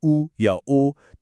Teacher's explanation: जब स्वर बोलते हुए होंठ गोल हो जाएं जैसे उ या ओ तो वो कहलाते हैं वृत्तमुखी